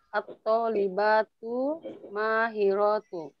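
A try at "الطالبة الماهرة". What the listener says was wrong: Ada alnya.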